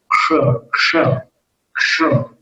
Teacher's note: ऊपर वाले दांत के पीछे जीभ को उठा कर ले जाना पड़ता है।